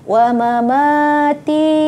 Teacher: Ma yang pertama pendek, ma yang kedua dipanjangkan.